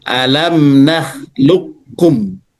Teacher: Langsung masuk qof-nya itu ke kaf enggak diqalqahkan lagi. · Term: idgham mutaqaribain